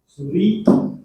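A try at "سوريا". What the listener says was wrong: jangan ditasdid, salah. Suria.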